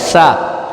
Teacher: سا ہے، ٹھیک ہے، جو زبان کی نوک سے ادا ہوا